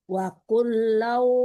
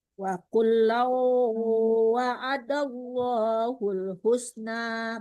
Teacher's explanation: Ulaika a'zamu darajatam minal lazina anfaqu min ba'du wa qatalu wa kullau wa'adallahul husna Ya, wakullau itu ditarik ke hidung ya Bu, jangan di sekedar tasdid waw ya, tapi ditarik ke hidung. Walaupun wawnya tidak tasdid tetap dengung ya, wakullau agak ke hidung Bu